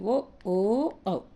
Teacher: కంఠ తాతాలవ్యాలు అంటే ఏంటిది కంఠం తాలువుల నుండి పుట్టినవి కంఠోష్టాల నుండి పుట్టినవి కంఠోష్టాల నుండి అంటే పెదవుల నుండి పుట్టినవి